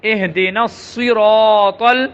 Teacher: اس میں نون کو صاد کے ساتھ ملائیں گے، پھر صاد کو موٹا کریں گے